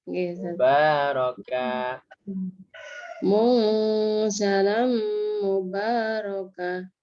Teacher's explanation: K-nya satu. K saja, bukan kah. Nggak ada kahnya.